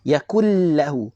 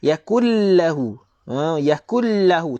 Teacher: Jangan bunyi huruf nun, bunyi huruf lam bersabdu saja. Yakullahu. Masuk terus pada lam bersabdu. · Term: idgham bila gunnah